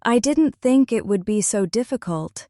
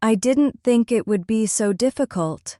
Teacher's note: Notice how some words stretch and some words reduce. The didn't becomes softer. Think becomes stronger. So stretches slightly. Difficult lands heavily. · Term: natural stress pattern